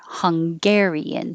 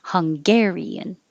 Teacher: if it was the adjective then we put the stress on gare